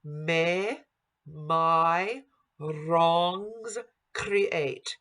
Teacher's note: Here we have a tapped R that's flipped.